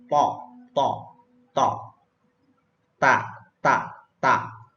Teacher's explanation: Ujung lidah bertemu dengan gusi atas, yaitu huruf to dan ta.